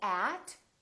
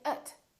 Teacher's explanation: at for with by these words are not very important so the vowels inside those words can sound really short and they sound like uh so we don't say at we say ut we don't say